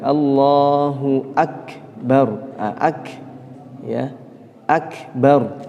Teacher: ini harus kafnya ini lebih tampak lebih tampak yakni nafasnya yang keluar